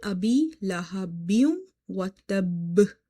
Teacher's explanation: You have to emphasize, you have to stress upon it, you have to say watab. So here qalqala will be the strongest, because we are pausing and the last letter is your qalqala letters. If you see, ba is from the qalqala letters.